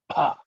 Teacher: It is an aspirated one, so you have to pronounce it with a little of air, extra air.